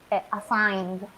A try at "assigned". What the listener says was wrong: Assigned. Remember, it's assigned. Assigned. It's not assigner. It's assigned.